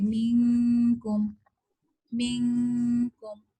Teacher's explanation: نون ساکن کا جو اخفا ہے، جو غنہ ہے، یہ ہم پتلا پڑھیں گے